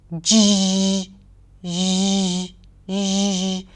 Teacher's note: The /ʒ/ sound is the voiced pair of 'sh'.